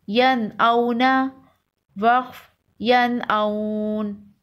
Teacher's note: نون ساکن کے بعد حروف حلقی ہے تو یہاں غنہ نہیں کریں گے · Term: اظہار حلقی